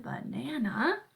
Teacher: those unaccented vowels at the beginning and the end, banana, are the schwas